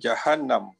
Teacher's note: sebutkan hukumnya wajibul gunnah, bacanya dengung 2 harakat